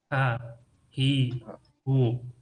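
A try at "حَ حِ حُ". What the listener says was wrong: Bukan ha, hi, hu, tapi ha. Makhrajnya itu dari tengah-tengah tenggorokan. Jadi tengah-tengah tenggorokan itu sini ya, tengah-tengah tenggorokan. Ha. Jadi kalau ha itu ya, apa ya, misalnya hahaha atau hansip atau buah ya, buah ha itu dari pangkal tenggorokan. Jadi bunyinya itu dari pangkal tenggorokan. Harum misalnya, harum itu dari pangkal tenggorokan.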